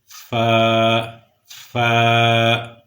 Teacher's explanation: اوپر کے دانتوں کا کنارہ نیچے کے ہونٹ کے ساتھ، اندرونی ہونٹ کے ساتھ یعنی تر حصے کے ساتھ جب ٹکرائے گا تو اس وقت فا ادا ہوگا